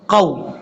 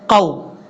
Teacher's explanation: قاف کو واؤ سے ملائیں گے لیکن اس واؤ کو لمبا نہیں کرنا، یاد رکھیے گا.